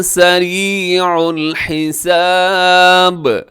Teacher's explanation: یہاں بھی آخر میں با ہے، وقف کریں گے تو با قلقلہ ہوگا